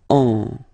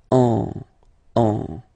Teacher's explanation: basically you don't listen, or you don't hear, sorry, any N in my pronunciation. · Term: nasal